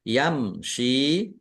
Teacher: Shin kasroh ya sukun, mim sukun bertemu dengan huruf sin, yam shi, ya, mim sukun bertemu dengan huruf shin, bacaan idhar safawi dibaca jelas